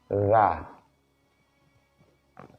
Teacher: huruf zal yang berharokat fathah dibaca za pada ujung lidah